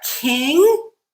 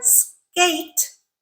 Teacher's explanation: King we're adding aspiration but in the word skate it's that pure phon we have no aspiration